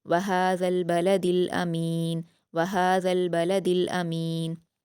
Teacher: वहाल बलदिल हमजा पर हरकत जल्द पढ़ेंगे। मीम पर या मदद है दो हरकात खींचेंगे। नून को वफ करते हुए जज्म दे देंगे।